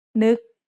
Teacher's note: has an initial low-class consonant and a final stop that makes it a dead syllable, plus a short vowel that makes it a high tone.